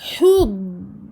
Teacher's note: Donc je vais aller sur le makharaj du dad, je vais faire remonter les côtés du fond de ma langue vers les molaires supérieurs. Ça c'est le point d'articulation du dad et je le garde une durée assez longue pour lui donner sa caractéristique qui lui appartient, qui est la rakhawa, écoulement du son.